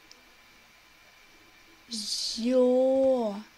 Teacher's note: З превратился в мягкий согласный звук после того, как подружился с гласным звуком Ё.